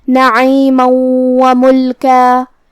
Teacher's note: واو حروف الادغام بغنہ میں سے ہے اور ادغام کا معنی ہے حرف کو حرف میں داخل کرنا، تو ہم یہ تنوین کو واو میں ملا کے غنہ اور تشدید کے ساتھ یہ حکم کو ادا کریں گے · جیسا کہ یہاں حرف المیم ہے تو یہ 2 میم ہے، میم ساکن اور میم متحرک. کلمت نعیمن میں حرف العین کو ہم حلق کے درمیان والی حصے سے ادا کریں گے. میم پہ تنوین زبر ہے پھر حرف الواو ہے.